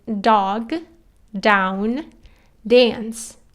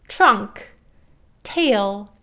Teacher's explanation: D is on aspirated so you just say dog down dance T on the other hand is aspirated air does come out of your mouth and you say trunk tail there's definitely more air than D